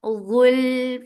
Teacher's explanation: Ghul for dhamma circle ellipse attached with lam, lam will get sifa of tawassut, and tawassut is medium flow of sound.